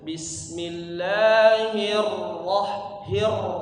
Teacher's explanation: ro-nya tasydid ditahan sedikit. Jangan terlalu cepat.